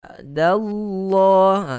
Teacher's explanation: Kalimah Allah ni kita baca pula dengan tebal. Sebab sebelum lafzul jalalah, kalimah Allah itu, lam itu kita baca dengan tebal.